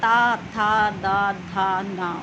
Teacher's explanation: और इनका जो उच्चारण स्थान होता है फ्रेंड, ये क्या होता है आपका, दंत व्यंजन, यानी कि ये दंत से निकलते हैं हमारे। ओके, ता, था, दांतों और जीवा के बीच से देखिए आप ध्वनि निकलती है